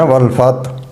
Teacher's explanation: اور آگے ہے والفتح، تو ہمارے کچھ لوگ کیا کرتے ہیں؟ والفتح، ہا کو کھا جاتے ہیں، ہا کو ظاہر نہیں کرتے، تو اس کے معنی فتح کامیابی کے نہیں ہوں گے۔